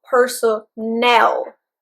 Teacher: That's why there is also aspiration at the beginning of that word, on the first syllable. But with personnel, the stress is on the last syllable.